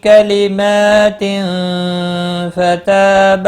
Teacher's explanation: کلمات، میم کے اوپر کھڑی زبر ہے، ایک الف کے برابر کھینچ کر پڑھیں گے۔ تنوین کے بعد حروف اخفا کا فا ہے، اخفا حقیقی ہوگا، تا الف مدہ ہے، ایک الف کے برابر کھینچ کر پڑھیں گے۔